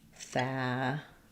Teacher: Yeah, so different, as I mentioned, than family. We have first syllable stress and the clear a vowel, family. And that one you want to have kind of more of an a sound, like in fat or cat, family, or family.